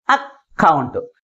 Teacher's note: Second syllable is pronounced with greater force comparing with first syllable in this word.